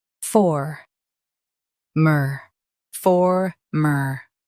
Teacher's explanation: Emphasize for and keep mer light.